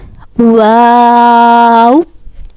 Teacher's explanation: This wow originates with partial meeting of the lips. Wow. And also we said this wow for 5 seconds.